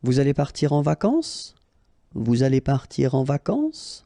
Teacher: You should raise your voice a little bit at the end just to inform the person that it's a question